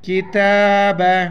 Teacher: یہ تا کے اوپر کڑا زبر ہے، ایک الف مقدار اس کو اوپر کھینچیں گے